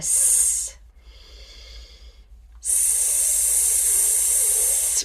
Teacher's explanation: that hissing sound is a fricative, so it's an obstructive sound that we're using.